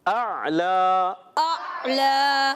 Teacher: लाम पर खड़ा ज़बर है, एक अलिफ खींच के अदा करेंगे।